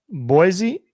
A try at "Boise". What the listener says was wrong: I think you pronounced it wrong just now. I think you're not supposed to pronounce it with a Z. I think it's supposed to be with an S. Boise. But you said Boise.